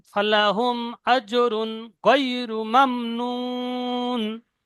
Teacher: এখানে তানমিনের পরে গয়েন এসছে, হরফে হালকি, গুন্না হবে না।